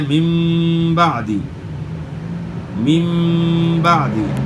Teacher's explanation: اقلاب کرنا ہے، یعنی نون یا تنوین کے آواز کو میم سے بدلنا ہے · نون یا تنوین کو میم میں تبدیل کرنا۔ اور غنہ کے ساتھ ادا کرنا